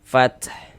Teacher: Ada nafas yang mengalir ketika kita mengucapkannya, karena di antara sifat huruf ta juga memiliki sifat hams.